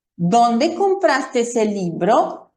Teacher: Fíjense aquí en el propio gráfico del audio, cómo baja mi tono de voz al final